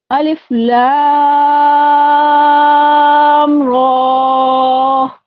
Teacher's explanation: غنہ نہیں کرنا، فوراً ہی ہم نے منہ کو کھول دینا ہے، را پڑھنا ہے تاکہ غنہ نہ ہو پائے